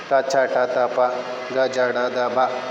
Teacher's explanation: ಕಡಿಮೆ ಉಸಿರಿನಿಂದ ಉಚ್ಚರಿಸಲ್ಪಡ್ತಕ್ಕಂಥ ಅಕ್ಷರಗಳಿಗೆ ಅಲ್ಪ ಪ್ರಾಣಾಕ್ಷರಗಳು ಅಂತ ಕರಿತೀವಿ